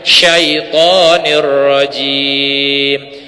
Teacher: Setelah huruf sya dilepaskan, kemudian matikan, tahan huruf ya-nya